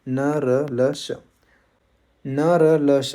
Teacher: न र ल श इन वर्णों के उच्चारण में क्या होता है? जीभ ऊपर के दांतों के मसूड़ों को स्पर्श करती है।